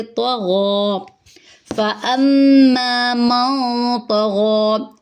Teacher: تو پر ہے، غین پر ہے، غین کے اوپر کھڑا زبر ہے، اس کو ایک الف کے برابر لمبا کریں گے۔